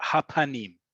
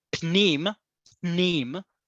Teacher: without a vowel, with a silent vowel between the pe and the nun